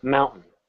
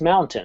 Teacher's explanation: You didn't hear me say a T there, did you? I mumbled it, mountain.